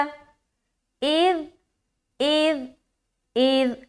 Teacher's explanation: نرمی کے ساتھ بغیر سیٹی کے